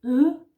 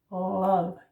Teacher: And as you can see, the L goes up, and the Danish L is actually a little in front in the mouth, whereas the English is a little bit more, a part of the tongue is a little bit more back in the mouth.